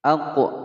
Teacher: ada huruf qaf yang menyandang harokat sukun di tengah-tengah kalimat dipantulkan. Ini adalah hukum bacaan qalqalah sughra.